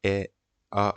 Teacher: अ आ में मुंह बड़ा खुल रहा है गोल नहीं बन रहा है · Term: अवरत मुख